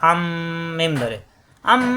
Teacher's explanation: নুন সাকিনের পরে বা আসছে ইকলাব গুন্না, এই নুন সাকিনকে পরিবর্তন করে মিম ধরে গুন্না করতে হবে